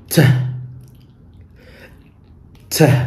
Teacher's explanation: I'm going to stop the air coming out from my lungs to pronounce the T sound. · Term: plosive sound